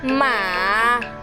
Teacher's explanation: Third tone is a fall and rise tone